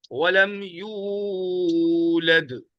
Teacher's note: یو واو مدہ آ گیا، اس کو کھینچنا ہے. یولد نہیں پڑھنا ہے، یولد.